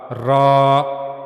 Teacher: را کے بارے میں ہم نے پڑھا کہ زبان کی نوک کا اوپر والا حصہ اوپر کے سامنے والے دو دانتوں کے پیچھے کے اندرونی مسوڑے سے جب ملے گا تو وہاں سے را ادا ہوگا